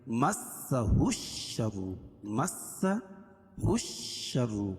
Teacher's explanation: اور سین پر تشدید ہے، تشدید والا حرف سختی کے ساتھ پڑھا جاتا ہے